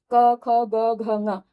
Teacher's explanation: ये क वर्ग जो है, ये इसका उच्चारण स्थान कंठ होता है, तो पांचों ही वर्णों का उच्चारण स्थान भी कंठ ही होगा।